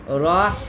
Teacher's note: ہا سینے کی طرف سے آئے گی